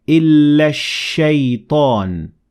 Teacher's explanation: Notice how in the first example I completely ignored hamzat wasl and the lam, and I connected the alif in illa directly to the sheen, and I said illa shaytan. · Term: sun al